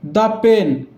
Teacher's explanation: পেন প দিয়ে উচ্চারণ শুরু হচ্ছে, প একটা কনসোনেন্ট সাউন্ড হয়, তাই এর আগের দাকে দা বলবো, যেহেতু কনসোনেন্ট দিয়ে উচ্চারণ শুরু হলে দা বলতে হয়।